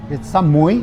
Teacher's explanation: but it's got to be a rising tone